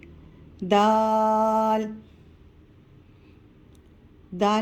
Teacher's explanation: मद है तो इसलिए हम दाल को खींच के पढ़ेंगे दाल दाल की अदायगी करते वक्त जबान की नोक सामने वाले दांतों के जड़ में जबान की नोक को टच करेंगे तो दाल की अदायगी होगी दाल दाल का मखर ता के